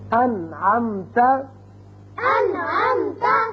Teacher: نون ساکن کے بعد عین آ گیا، نون پر ہم نے اظہار کیا، نون کو ظاہر کر کے پڑھا